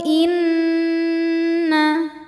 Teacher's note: cara membacanya adalah didengungkan bunyi n tahan sampai ada suara masuk hidung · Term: gunah musyaddadah